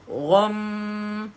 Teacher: Bila mati dengan huruf mim, pastikan ada dengung, sebab mim itu bertanda sabdu, wajibal ghunna.